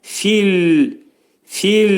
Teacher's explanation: Finin məxrəci yuxarı üstlə alt dodağının arasında olacaq. Fil, fil lə məxrəcini saxlayırıq iki saniyə miqdardında və yumşaq, incə şəkildə deyirik.